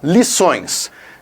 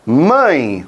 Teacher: nasal ressoando nas duas cavidades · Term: ditongo nasal